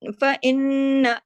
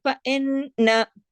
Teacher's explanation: میں نے آپ کو شروع میں ہی مثال دی تھی نا کہ فَإِنَّ نون پر تشدید ہے، اس کا مطلب یہ ہے کہ نون ایک تو نظر آ رہا ہے، ایک اندر چھپا ہوا نون ہے، اگر ہم نے اس کو سختی سے جوڑ کے صحیح طرح نہیں پڑھا، فَإِنَّ دونوں پہلے فَإِن اور پھر نہ، پہلا والا ان زیر کے ساتھ پڑھا اور دوسرا زبر کے ساتھ، فَإِنَّ، اس طریقے سے اگر ہم نے فَإِنَّ ایسے کر دیا تو ہم نے ایک نون پڑھا اور ایک نون نہیں پڑھا، یعنی نہیں پڑھنے کا نقصان کر دیا۔